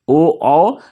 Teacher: ओ कंठ और ओष्ठ से उच्चारण इसका होता है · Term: कंठोष्ठ